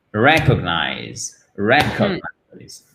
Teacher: c'est sur cette première syllabe qu'on va avoir notre accent tonique